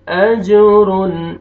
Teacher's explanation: जीम पे क़लक़ला करेंगे, double sound आएगा